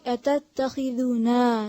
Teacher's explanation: ज़ाल के आगे वाव नहीं है, ठीक है, सिर्फ पेश है तो इसको लंबा नहीं खींचेंगे